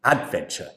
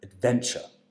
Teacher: She said adventure instead of adventure. So the stress has to come on the second syllable.